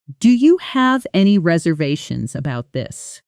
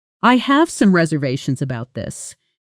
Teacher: Say the question with rising pitch at the end. "Do you have any reservations about this?" Now say the statement with falling pitch at the end.